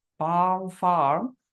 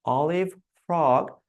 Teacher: পাম, ফার্ম, এটা neutral পজিশনে আমাদের লিপটা থাকছে, বাট অলিভ ফ্রগ, ঠোঁটটা একটু রাউন্ড শেপ পাচ্ছে। আমি যত উপরে উঠবো আমার ঠোঁটের রাউন্ডনেসটা তত বাড়তে থাকবে, একটু খেয়াল করবেন।